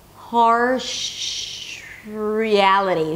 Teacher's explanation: from the sh sound, I bring the tongue up for the R.